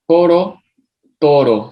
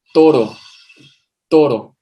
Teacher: En la primera estamos articulándolo con los labios, cerrando los dos labios, pegándolos al máximo, mientras que en la segunda estamos articulándolo con la lengua